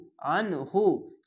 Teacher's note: আইনটিকে মোটা করে গলা চিপে পড়বেন, আইন নুন যাবার আন, হা পেশ হু, আন হু।